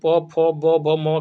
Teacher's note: प फ ब भ म का दोस्तों ओष्ठ से उच्चारण होता है